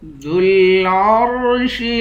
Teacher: عین کو را سے ملا کر را کو موٹا پڑھیں گے